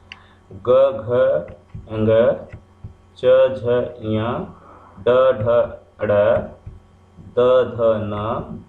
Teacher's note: झंकार के साथ इन वर्णों का उच्चारण होता है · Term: सघोष